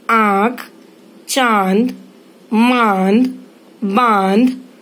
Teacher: इसी प्रकार चंद्र बिंदु अर्थात चांद पर बिंदी, इसे अनुनासिक कहते हैं क्योंकि जहाँ पर उच्चारण मुख अर्थात मुंह और नासिका दोनों स्थानों से होता है वहाँ स्वर या उसकी मात्रा पर अनुनासिक अर्थात चंद्र बिंदु लगाया जाता है, जैसे आँख, चांद, मांद, बांध आदि।